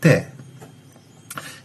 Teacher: donde la lámina de la lengua, que es un poco atrás de la ápice o de la punta de la lengua, se eleva y se acerca o pone en contacto con los alvéolos o el borde alveolar.